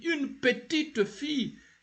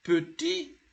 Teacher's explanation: When you add an E after the last consonant, which is a T, you'll have to pronounce that T. Whenever an E is added, the last consonant is pronounced.